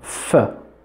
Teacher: you can see the lower lip touches the upper teeth they touch and that's labia dental both lip and teeth together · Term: labiodental